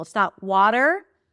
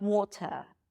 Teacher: in American English, you pronounce the R, you pronounce the T as a flap D